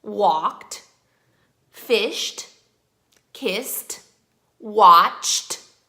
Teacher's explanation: Then we have the words that have the T sound at the end. They look like they would sound like ED, but they sound like just a T. These words are words that end with the consonants K, S, CH, SH, F, and P.